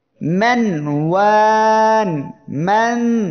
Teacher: এই যে নুন অক্ষরটি আওয়াজটা জারি আছে, মানে একেবারে বন্ধ হবে না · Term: তাওয়াসসুত